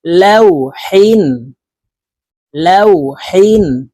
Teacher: হা হরফ হলকের মধ্যখান থেকে উচ্চারণ করব কারণ হার মাখরাজ হলকের মধ্যখান থেকে হবে লাউ হিন লাউ হিন